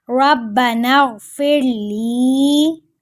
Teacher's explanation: غین موٹا پڑھا جائے گا اور لام کو ایک الف کے برابر لمبا کریں گے